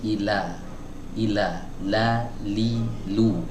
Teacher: bagian lidah yang menempel ke muqaddamul hanaq ke langit-langit bagian depan itu agak lebih banyak daripada sekedar kita mengucapkan huruf L dalam bahasa Indonesia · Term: huruf lam